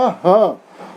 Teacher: ह जो है महाप्राण है और सघोष है। महाप्राण और सघोष, महाप्राण और सघोष क्या है?